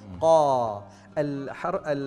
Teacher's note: القاف يستعلي اللسان عند نطق القاف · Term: حرف مستعل